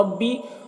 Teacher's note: بی میں جو مد ہے یہ مد منفصل ہے، اسے 3-4 الف کے برابر کھینچ کر پڑھتے ہیں اور ایک الف کے برابر بھی کھینچ کر پڑھ سکتے ہیں۔